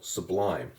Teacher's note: so if you say the word sublime to yourself you'll hear how the lime syllable is the stressed syllable sublime it gets more emphasis than the sub part so for